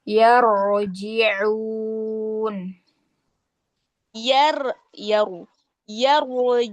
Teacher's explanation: rnya tebal kemudian ainnya tidak ke hidung